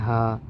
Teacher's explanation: عین جہاں سے نکلا تھا اس سے تھوڑا سا نیچے سینے کی طرف آپ جائیں گے تو اس سے ہا نکلتا ہے